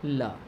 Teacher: ल को बोलते समय जीभ के जो किनारे हैं वे ऊपर लग जाते हैं तालु से और वायु उनके किनारों से बाहर निकलती है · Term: पार्श्विक वर्ण